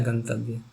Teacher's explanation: तो नासिका से भी जो बोला जाता हो और दंत से भी बोला जाता हो तो वो नकार ही तो है।